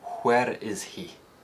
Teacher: There's no H dropping in Scottish English, and the sound is often used in words that begin WH.